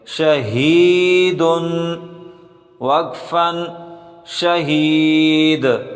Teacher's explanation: ہا کو سینے سے نکالیں، یہ ہا سینے سے نکلتی ہے اور جو حا ہوتی ہے وہ گلے سے نکلتی ہے۔